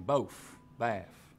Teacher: F for final TH sounds here, as in both, baff.